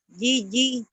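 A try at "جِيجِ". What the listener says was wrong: Cara bacanya gini, nih ini kan panjang ya, yang ini nih mantau bi nih kasar. Jiji gitu, jiji. Yang panjangnya ji-nya ya. Jiji.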